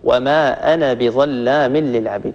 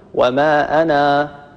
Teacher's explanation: لفظ أنا في القرآن لو تلاحظوا في المصحف تجدوا فوق الألف من كلمة أنا قد رسم صفر مستدير، هذا الصفر المستدير علامة على أن هذا الألف لا ينطق إنما يرسم فقط، وما أنا بظلام، ففي حالة الوصل كلمة أنا بما بعدها فإننا لا نثبت هذا الألف وإنما نحذف، نقول وما أنا بظلام للعبيد، بشرط ألا يقع بعد، طبعا هذا في حالة الوصل، إذا وقفنا فإننا نثبت الألف، نقول وما أنا، هذا إذا وقفنا، لكن إذا وصلنا فإن هذا الألف يحذف بشرط ألا يقع بعده همزة قطع.